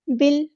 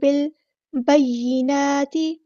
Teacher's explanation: با کو ہم نے لام کے ساتھ ملا دینا ہے، حمزۃ الوصل ہمارا یہاں پہ ڈراپ ہو جائے گا۔